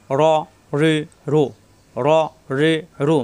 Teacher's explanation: র জিব্বার আগার fit, উপরে তালুতে লাগবে।